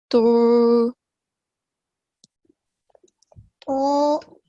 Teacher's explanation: However, the back of the tongue is raised to achieve that thick sound